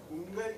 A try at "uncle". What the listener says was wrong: What should it be? Uncle. What should it be? Yeah, don't say uncle. Don't bring a there. K and la together. What is it? Uncle.